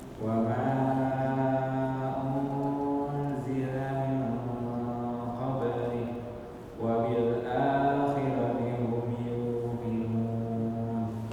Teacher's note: Ikhfa-nya kurang lama. Kurang ditahan 2 harakat.